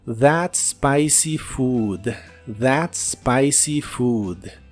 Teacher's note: principio se empieza a pronunciar desde la s spicy spicy y la doble o de la palabra Food se pronuncia como una u larga